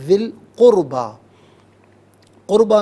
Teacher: وَإِيتَاءِ ذِي الْقُرْبَى، ذال یا ذی ناظرین ذا کے نیچے زیر ہے، ذال کے نیچے زیر ہے، سے القربہ کی لام ساکن کے ساتھ ملائیں گے، درمیان میں سے الف یعنی حمزہ کو حذف کریں گے۔ ذل قربہ، قربہ میں را ساکن ما قبل قاف پر پیش تو را ساکن کو پر کر کے پڑھا جائے گا۔